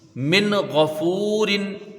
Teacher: ٹھیک ہے، یہاں پر بھی وہی ہوگا، نون ساکن ہے، اس کے بعد حروف حلقی کا غین آیا ہے، یہاں اظہار حلقی ہوگا، یعنی نون ساکن کو ظاہر کر کے بغیر غنہ کے جلدی پڑھیں گے